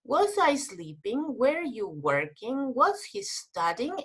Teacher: yes it's a rising intonation